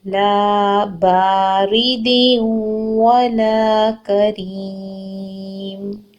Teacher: لام زبر الف لا ہے، 2 حرکت لمبا کریں گے. با زبر الف با، 2 حرکت لمبا کریں گے.